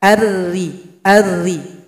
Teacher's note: pangkal lidah tidak naik ke langit-langit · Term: ro yang tarqiq